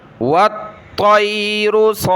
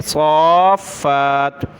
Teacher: صاد کو کھینچتے ہوئے فا سے ملانا ہے اور فا کو سخت کریں گے۔ صاد فا کھڑا مد زبر صاف فا کھڑا زبر فا صاف فا تا دو زیر تین صافات جب رکیں گے تو والطیر صافات فا کو ایک الف کی مقدار کھینچیں گے کھڑا زبر کی وجہ سے اور تشدید کی وجہ سے سخت کریں گے صافات۔